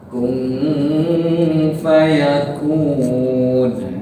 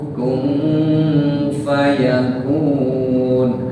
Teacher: Kun berarti nun mati, nun sukun. Bertemu fa berarti ikhfa. Jadi bacanya langsung persiapan di makhraj fa.